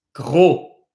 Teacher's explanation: The word for fat, gros, we do not pronounce the S. Gros, not grosse.